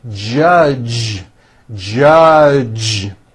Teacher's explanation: here stays the same you just add voicing for the J this voiced J sound comes at the beginning and at the end of the word judge